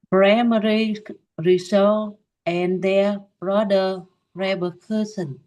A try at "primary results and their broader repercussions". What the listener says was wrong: Yeah, so the results, you have two z sounds. So primary results and their broader repercussions.